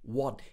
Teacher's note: He drops the T at the end of the word. It changes to a glottal stop.